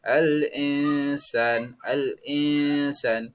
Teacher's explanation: Yang kedua dibaca samar dan mendengung atau ikhfa